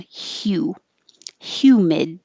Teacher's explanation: you start with your tongue in a high position like you're going to say u but you start with the h sound